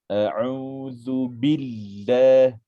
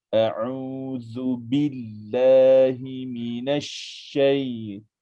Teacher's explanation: yang saya beri penekanan kepada nabrah, penekanan kepada huruf syaddah. Kena tekan tuan-tuan.